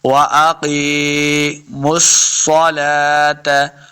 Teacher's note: میم کو سواد کے ساتھ ملانا ہے، سواد حروف مستعلیہ سے ہے، سواد مشدد ہے، اس لیے میم کو ہم نے سواد کے ساتھ ملا کے پڑھا ہے.